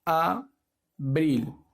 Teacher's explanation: Lleva fuerza en la última sílaba, lo que le hace una palabra aguda, pero ya esta vez lleva acento prosódico.